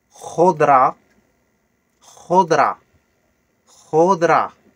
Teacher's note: Le R raclé au fond de la gorge, comme on dit le mot cracher